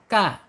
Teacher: Kaf sudah disampaikan yaitu ada di alisan yaitu ujung lidah menyentuh langit-langit yang berdaging